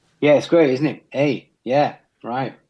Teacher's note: they also have a style of speech which is different in the sense that they turn everything into a question